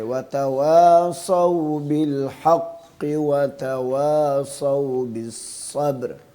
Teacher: صاد کو بھی موٹا پڑھنا ہے، ٹھیک ہے، اور اس میں سیٹی کی بھی آواز آئے